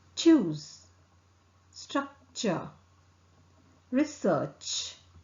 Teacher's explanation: articulated with a tongue tip touching the back of the teeth ridge vocal cord does not vibrate